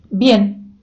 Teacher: вона вимовляється як наша б тобто ее з замиканням губ